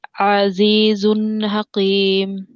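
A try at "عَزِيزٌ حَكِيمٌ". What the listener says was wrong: হাকিম স্বাভাবিক, কফের উচ্চারণ এসে পড়তেছে আপুর ভিতরে কাফের মধ্যে, বুঝতে পেরেছেন? আবার মোটা হবে না, স্বাভাবিক। হাকিম।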